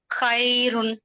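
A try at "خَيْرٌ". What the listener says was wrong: దీర్ఘం తీయకూడదు, త్వరగా చదవాలన్నారు కదా.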